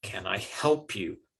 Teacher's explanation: They tend not to be stressed a lot in the average sentence. And so the main stress is on the help.